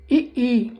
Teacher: तालू से हवा रगड़ खाते हुए निकल रही है तालू से